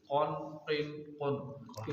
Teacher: پہلا والا کاف باریک ادا ہوگا، زبان کی جڑ اور تالو کے سخت حصے سے کاف ادا ہوگا، اور 2 نقطوں والا کاف زبان کی جڑ اور تالو کے نرم حصے سے، اور موٹی آواز نکلے گی